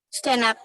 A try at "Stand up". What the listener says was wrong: Stand up. Stand up. Nah, kalau ini S D-nya harus jelas. Stand up. Sama dengan kalau acara komedi. Stand up comedy. Stand up. D-nya bunyinya jelas. Kalau nggak ada kata up-nya, benar. D-nya nggak bunyi. Stand. Stand. Stand up.